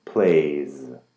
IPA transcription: pleɪz